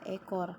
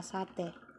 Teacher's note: fonem e memiliki dua alofon yaitu yang pertama ada Tengah atas depan tak bundar dan yang kedua Tengah bawah depan tak bundar